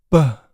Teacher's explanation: I could use my lips to fully obstruct the sound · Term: consonants